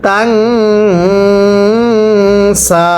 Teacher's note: এরপরে তা নুন জবর তাং, গুন্নাহ করব, নুন সাকিনের পরে সিন ইকফার গুন্নাহ করে পড়তে হবে